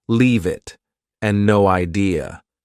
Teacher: Sometimes one word flows into another, for example, leave it and no idea. Both sound like they have no spaces between the words.